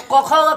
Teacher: क ख का उच्चारण स्थान कंठ